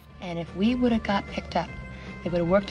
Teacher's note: whether you're learning american or british english have usually reduces to a v sound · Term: reduction of the word have